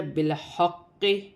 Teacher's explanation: اور یہاں پر قاف مشدد ہے، قاف کو جما کے سختی کے ساتھ ادا کیا جائے